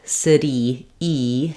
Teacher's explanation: And what I mean by that is that instead of staying here for the tense E, city, E, having that really high front tense vowel, the tongue might drop a little bit and be a little too relaxed.